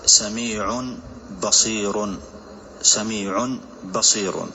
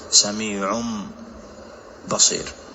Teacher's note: Nah, فمثلا سميع بصير نقلب هذا التنوين إلى ميم كاملة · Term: إقلابا